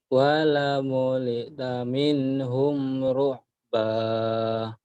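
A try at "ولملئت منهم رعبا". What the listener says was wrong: Benar bagus cuma ada terlalu cepat. Wala muli taminhum ru'ba.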